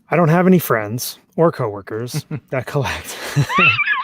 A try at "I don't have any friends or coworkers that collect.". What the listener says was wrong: You put the emphasis on the wrong part of that statement.